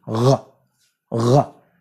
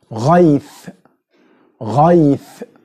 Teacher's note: It's from the same place of producing عين, but you touch with your velum. You touch, these back organs touch each other.